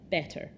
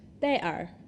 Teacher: So what's happened is the way I'm saying the word itself has changed. The T sound in the middle has disappeared. It's become replaced by a glottal stop. And the R on the end has changed its shape a little bit as well.